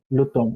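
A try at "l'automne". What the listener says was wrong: লুতন, লুতন, M sound নাই।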